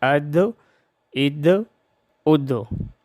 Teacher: دال جب ساکن ہو تو اس میں ہم قلقلہ کریں گے: اد اد اد۔ دال کو شد کے ساتھ یوں ادا کریں گے: حمزہ دال زبر اد، دال زبر دا، اد۔